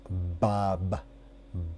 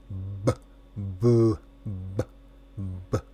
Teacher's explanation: Tus labios detienen el aire y luego lo liberan al separarse. Mientras tanto, tu lengua está relajada al fondo de tu boca. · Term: sonido de la B